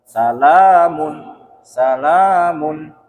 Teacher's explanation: Kalau salamun itu 4 harokat. Di situ cuman 2 harokat, dia fathah panjang.